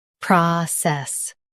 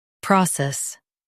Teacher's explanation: In US, stress pra. In UK, stress pro.